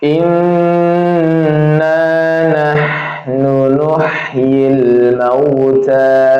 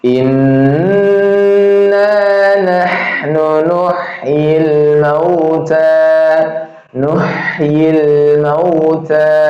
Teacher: Ini rakhawah huruf ha ya. Masih jalan nafasnya juga keluar.